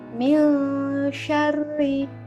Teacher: Nah, contoh ikhfa yaitu min syarri. Nah, di situ ada nun mati bertemu dengan huruf shin. Maka cara membacanya samar-samar.